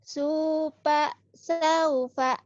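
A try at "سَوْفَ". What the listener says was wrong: Sofa, saufa. Ini maklum mulutnya orang Sunda. Supa. Sufa F. Hey, F. Supa, supa. Sufa F.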